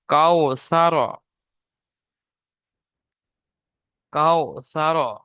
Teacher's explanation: ওয়াও লিন হবে। ওয়াও লিনকে নরম আওয়াজে তাড়াতাড়ি পড়তে হবে, টান দেওয়া নিষেধ।